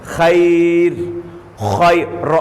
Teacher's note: خا کو تو موٹا پڑھیں گے، مستعلیہ میں سے